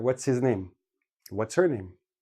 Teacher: we keep the TS and make it we drop the H and we put it all together